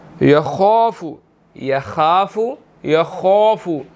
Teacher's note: خا جو ہے وہ یہاں پر موٹا ہے، ہم نے اس کو موٹا ادا کرنا ہے